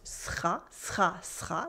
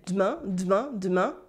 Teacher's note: The weak unstressed E sound get skipped a lot in French. Here, for instance, we have this weak E sound in the middle of words.